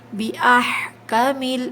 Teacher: ہا میں اچھی طرح سے حلق سے ادا کریے، حلق کے درمیانی حصے سے ہا ادا ہوتا ہے